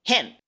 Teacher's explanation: solo se hace una oclusión del sonido un stop que ya es percibible para el oído